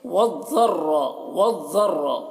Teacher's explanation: वाव को ज़ाद से मिलाकर पढ़ेंगे, ज़ाद को पुर पढ़ना है और रॉ को पुर पढ़ना है